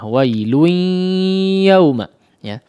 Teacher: Tapi di sini dia masuk kepada huruf ya yang memang huruf idgham bi gunnah ya. Tanwinnya masuk kepada huruf ya sehingga disertai dengan gunnah.